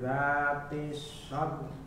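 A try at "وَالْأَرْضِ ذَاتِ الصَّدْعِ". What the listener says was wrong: Tapi ainnya jangan hilang. Sad saja, ainnya hilang. Sad. Jadi ke ain. Huruf terakhir itu memang dibaca setengah harokat. Nyaris tidak terbaca tapi tetap terbaca. Wal ardi dzatis sad.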